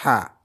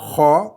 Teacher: l'air sort du palais, ha, par opposition à la lettre suivante, kha, où c'est dans la gorge même qu'on fait le kha